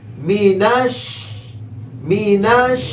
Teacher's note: میم کے نیچے زیر لمبا نہیں کریں گے، نون کو شین کے ساتھ ملائیں گے، شین کی آواز پورے منہ میں پھیلے گی، مینش مینش، اور شین کو یا سے ملائیں گے، یا لین ہے، نرمی سے ملانا ہے، جلدی سے پڑھنا ہے، شی مینش شی۔